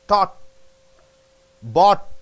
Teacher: the T is held at the end of a word